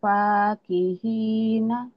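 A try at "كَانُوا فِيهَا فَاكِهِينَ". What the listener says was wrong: Nah, kalau baca Quran ini jadi sukun. Dan jadi panjang. Ini jadi mad ari disukun. Kanu fiha fakihin. Tuh, jadi panjang ujungnya.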